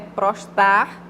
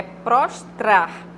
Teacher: Geralmente as pessoas engolem o último R